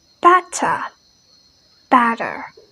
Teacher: T sound is very common in British, and they absolutely pronounce it much more stronger. But American, they change the T sound to D.